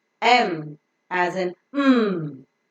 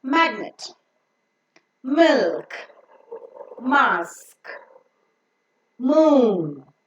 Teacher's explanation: in order to enable the air to go through the nose the soft palate is lowered so that the air can pass only through the nose and not through the mouth · is pronounced by closing both the lips the upper lip and the lower lip come extreme close to each other touching and pressing each other so that the oral cavity is completely closed the air that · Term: nasal sound